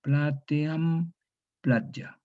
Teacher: esta E se cierra en una semiconsonante, una yod.